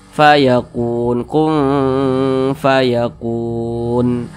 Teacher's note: ini kita sukunkan maka namanya berubah menjadi Mad Arid l sukun panjangnya boleh dua harakat boleh empat harakat hingga 6 harakat